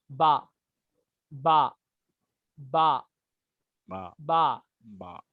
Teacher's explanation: नीचे वाले होठ से बा निकलेगा